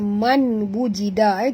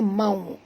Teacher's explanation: masukkan bunyi nun ke dalam waw disertai dengung 2 harakat, iaitu idgham ma'al gunah.